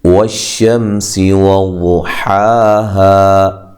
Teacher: شین کو جب ادا کرنا ہے آواز منہ میں پھیل جاتی ہے جب شین ادا ہوتا ہے۔ واو کو ادا کرتے ہوئے دونوں ہونٹوں کو گول کرنا ہے، سین کو باریک پڑھنا ہے، سی اور لمبا نہیں کرنا، زبر زیر پیش والے حرف کو لمبا نہیں کیا جاتا۔